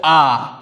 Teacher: যখন আমরা আকে উচ্চারণ করি তখন কিন্তু আমাদের ঠোঁট একদম কুচকে যায় না আবার ঠোঁট একদম প্রসারিত হয়ে যায় না আ অর্থাৎ মিডিল পয়েন্টে কিন্তু আমাদের ঠোঁটটা